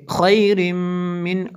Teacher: تنوین کے بعد میم حروف جر معلوم میں سے ہے، یہاں پہ ادغام ہوگا ، خیر، ایسے گنہ کریں گے، خیر من اچھا، خیر من